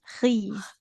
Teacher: Jangan si, khizna ya, tapi khizna. Huruf kho itu di tenggorokan atas.